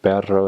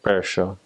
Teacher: In San Juan, they can't roll their R's, or don't roll their R's. And so it's more of like so instead of perro, it would be like percho.